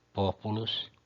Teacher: Quando a penúltima é breve, que é o pu, o acento vai para a antepenúltima.